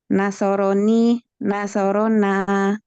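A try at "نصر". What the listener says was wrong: Nah, sahih.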